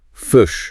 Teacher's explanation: One of the things people notice about New Zealand English is that I sound often sounds more like a U sound.